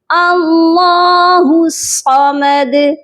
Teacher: تو اللہ کے لام کو موٹا کر کے پڑھا گیا